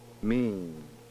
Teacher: when saying the word mean however the port is open throughout the entire production mean it appears that the velum does not have time to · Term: nasalization of vowels